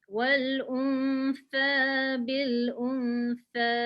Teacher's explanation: Masa bibir kita muncung untuk hamzah aja pada depan. Lepas tu nak masuk nun tu dia tak muncung dah.